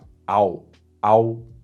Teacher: AO in Chinese is ah mixed with o